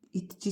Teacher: İ incə qapalı dodaqlanmayan saitdir. · Deməli, vurğu ikinci hecaya düşür.